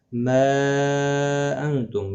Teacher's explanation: مد منفصل ہے، تین الف کی مقدار کے برابر کھینچ کر پڑھیں گے